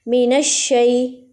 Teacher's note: نون جو ہے وہ شین سے جا کے مل رہا ہے تو شین پہ تھوڑی سی سختی آ رہی ہے